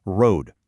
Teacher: one single pure sustained vowel, a monothong